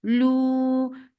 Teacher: make it two counts long and circle lips